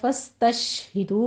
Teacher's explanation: سین پر سیٹی کی آواز لائیں گے اور شین پر تفشی پیدا ہوگی، دونوں کو آپ نے حرکت نہیں دینی.